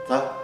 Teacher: Por exemplo, um ponto embaixo da letra, por exemplo, tarece tá, né? parece com o nosso T, mas tem um som um pouco diferente e é é pronunciado colocando a ponta da língua para trás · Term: retroflexas